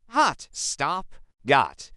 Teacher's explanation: In American English, this is an open, relaxed a sound.